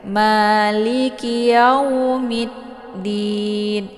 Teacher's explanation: Yang ditekan itu di mid karena ada tasydidnya, sabdunya di huruf dal ya.